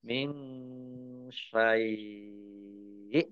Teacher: nun sukun bertemu dengan huruf sin, bacaan ikhfa, samar-samar.